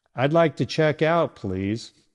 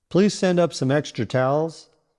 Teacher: Do you hear how your voice naturally drops at the end of each sentence? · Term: falling intonation